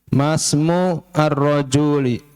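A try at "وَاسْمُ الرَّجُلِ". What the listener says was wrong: Jangan ar lagi ya. Wasmur rajuli. Nah, alifnya udah gak kebaca.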